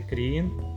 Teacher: Kriegen vai ser Krien, onde então o G desapareceu completamente.